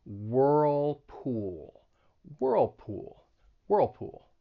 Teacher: you should feel your tongue getting pulled up two times for that dark l